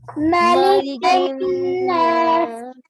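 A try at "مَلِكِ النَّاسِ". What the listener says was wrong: مالک نہیں ہے, مالکی میم فتح ما.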